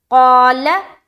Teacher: ला को पुर नहीं करना, ला हर हाल में बारीक होगी, हर लाम बारीक होती है सिवाय लफ्ज अल्लाह के लाम को छोड़कर।